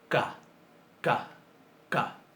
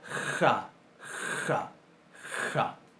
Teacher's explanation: Si le sacamos el puntito, pero mantenemos el mismo punto de articulación y mantenemos el mismo modo de articulación, que es decir, sorda, sin acción de las cuerdas vocales, pero en vez de oclusiva la volvemos fricativas, nos queda una J, o uno de los tipos de J que nosotros conocemos, porque manejamos varios, pero todos los escribimos igual, que es la ja, ja, ja.